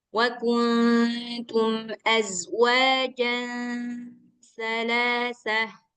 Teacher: Ini huruf sa yang makhrajnya di ujung lidah